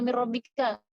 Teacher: kita rubah si nun ini, kita gabungkan ke huruf kedua seakan-akan huruf nun ini kembar dengan huruf setelahnya. Jadi seakan-akan jadi satu gitu ya. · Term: idgham